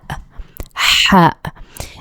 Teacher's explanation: This is a heavy letter, and it comes from the middle of your throat. It's breathy. It's like a strong H. Okay, it's deeper than the English H.